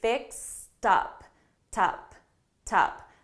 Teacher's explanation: So here, because I have up, fixed up, and I have a T and a vowel sound, I'm going to transfer. I'm going to link these sounds together, and I'm actually going to say fixed up, tup, tup. So I'm going to transfer that sound so I can link it together.